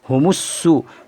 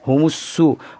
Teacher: سین میں تشدید کی آواز میں ایک قسم کی سختی ہوتی ہے، اس لیے سختی کے ساتھ ادا کریں گے